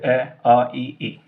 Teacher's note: जिन स्वरों के उच्चारण में होठों की आकृति वृत्त के समान गोल नहीं होती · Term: अवृत्ताकार